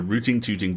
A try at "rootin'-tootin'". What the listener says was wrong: You can't pronounce the final G in a Western IND gerund. It's rootin'-tootin'.